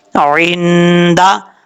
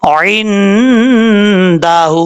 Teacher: عندہ، عین نون زیر عین، دال زبر دا، عندہ، ہا الٹا پیش ہو، عندہ، ہا کے اوپر الٹا پیش ہے، ایک الف کی مقدار اس کو لمبا کر کے پڑھیں گے